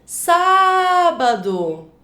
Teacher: A sílaba em que você se demora mais é o sá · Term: sílaba mais forte